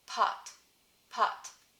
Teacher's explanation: because it's a voiceless plosive occurring at the beginning of the word it's gonna be aspirated and it tracks for me with the finger test pot pot